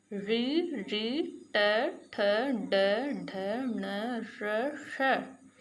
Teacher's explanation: इनका उच्चारण हमारे मूर्धा को, यानी जीभ हमारी थोड़ा सा घूम के और हमारे मूर्धा को टच कर रही है